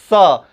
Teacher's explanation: इसका उच्चारण हम लोग जो है तालु से करने का काम करते हैं · जीभ जो है दांत से थोड़ा ऊपर जब जा करके टकराती है और वहाँ से जब स्व निकलता है तो उसको हम लोग तालव्य स्व कहते हैं। बोलने का प्रयास करेंगे, जीभ दांत से थोड़ा ऊपर टकराना चाहिए तो उसको तालव्य स्व कहेंगे।